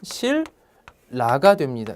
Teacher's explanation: 자, 신라지만 발음을 하면 실라가 됩니다. 니은이 역시 리을로 변했습니다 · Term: 유음화